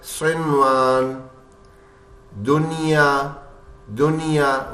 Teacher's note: نون کو ہٹا بھی نہیں رہے اور وہ واو سے مل بھی نہیں رہا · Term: نون ظاہر کر کے